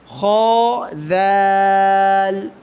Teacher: خا کو موٹا پڑھنا ہوتا ہے، اس کو کھا پڑھنے سے بچیں